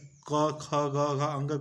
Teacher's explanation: अगर उच्चारण स्थान की बात आ जाए तो क वर्ग का उच्चारण स्थान अगर पूछ दे तो ये आपका कंठ से होता है